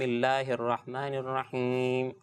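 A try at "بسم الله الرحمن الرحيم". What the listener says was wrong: مجھے بسم اللہ میں ایسا فیل ہوا تھا یہ جو لفظ اللہ کی ہا ہے وہ بھی ہا بن گئی تھی یہ ہو جاتا بعض اوقات.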